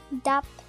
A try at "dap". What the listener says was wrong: Not dap, it's Tagalog, so dup. Yeah, because da de di do du.